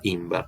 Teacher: La doble R se simplificara en una, imbr. Y la lengua desarrollara, por una cuestión eufónica, una E entre la consonante labial y la vibrante, de modo que se produce, mejor dicho, esta forma imber, ¿no?